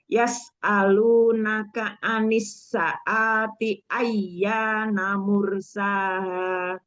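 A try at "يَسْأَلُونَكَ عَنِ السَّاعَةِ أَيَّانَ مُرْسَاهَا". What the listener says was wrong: 2 harokat ya anis saati.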